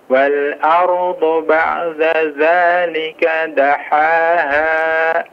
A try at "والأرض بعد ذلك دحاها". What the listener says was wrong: diperjelas dal sama zalnya.